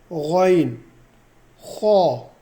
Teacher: حلق کے ابتدائی حصے سے، اس کو موٹا کر کے پڑھیں گے